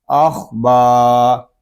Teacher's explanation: خا یہ حروف مستعلیہ میں سے ہے، اس کو پوری یعنی موٹا پڑھیں گے